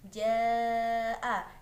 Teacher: Ja'a, terdapat bacaan mat wajib muttasil dikarenakan adanya mat yang bertemu dengan hamzah dalam satu kalimat panjangnya 5 harokat atau 2,5 alif. Kumdikrun, terdapat bacaan idhar syafawi dikarenakan adanya mim sukun yang bertemu dengan huruf dal.